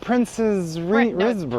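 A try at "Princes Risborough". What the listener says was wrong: Prince Risborough. Prince, It's not Princess, it's Prince Risborough.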